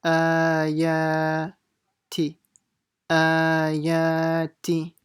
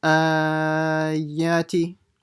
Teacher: They both have a standing fatha, so they should be the same, stretched by the same amount.